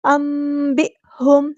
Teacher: حمزہ کی آواز کو واضح ادا کریں گے، جھٹکے کے ساتھ ادا کریں گے